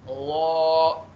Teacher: लॉ में जो है आप क्या करेंगे, होंठों को पूरा तरीके से गोल कर देंगे क्योंकि ये है मोटा हर्फ